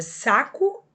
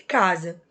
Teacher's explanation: a letra S aqui, ela representa o próprio fonema S em saco, mas já em casa, ela representa o fonema Z.